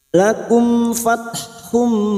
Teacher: mim sukun bertemu Fa Idhar syafawi mim sukun dibaca jelas tanpa mendingung · Lakum fathum duma tanwin bertemu mim idgham bi gunnah, siap masuk dan mendengung masuk pada huruf berikutnya yaitu huruf mim dan mendengung selama 2 atau 3 harokat